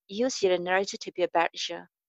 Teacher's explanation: To be a becomes to be a better ya. You becomes ya or just ya